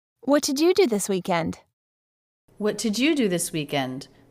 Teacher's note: And stress do. But since she's returning the question back to him, the word you is stressed.